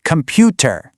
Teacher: in Indian English, you'll often hear the stress on the second syllable